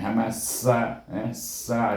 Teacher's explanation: sin baris di atas bunyi sa dengan hamas sa, sa ada angin bunyi